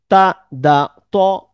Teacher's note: জিহ্বার আগা সামনের উপরের দাঁতের গোড়ার সাথে লেগে।